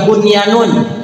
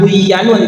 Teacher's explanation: Sekalipun nun sukun ketemu ya atau wau itu tetap dibaca izhar ya. Namanya izhar wajib.